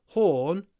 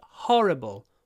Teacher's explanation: So horn is the or sound, or, but horrible is the open sound.